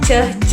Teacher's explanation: termasuk ke plosif karena ketika mengucapkan huruf C dan je itu adanya letupan